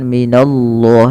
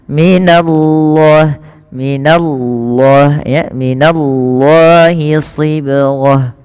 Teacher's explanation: Karena didahulukan dengan huruf fathah. Tapi untuk nanya jangan ikut tebal, jangan minallah, tapi minallah, nanya tipis.